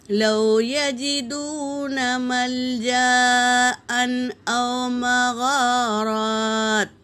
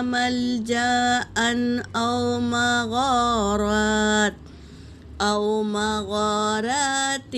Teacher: تنوین کے بعد حمزہ آیا ہے تو یہاں تنوین کا اظہار ہوگا